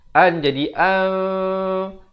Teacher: Menukar bunyi nun kepada bunyi mim. An jadi an. Bibir itu bersentuhan saja 2 harakat ataupun hampir bersentuhan. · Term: iqlab